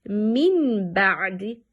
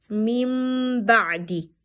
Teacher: we changing this nun in pronunciation into mim, and holding on that mim for 2 harakat, 2 beats